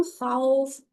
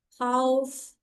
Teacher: خوف کرنا ایک الف کے برابر ہی لمبا ہے لیکن بہت نرمی سے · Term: واو لین